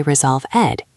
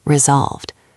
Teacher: You do not say resolve ed. You say resolved. It is one smooth sound at the end. Resolved. Imagine there is no e just a v and a d. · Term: soft d